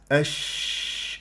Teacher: لما تعمل الان الش كيف انه انت ترفع وسط اللسان متجه الى سقف الحنك الاعلى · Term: التفشي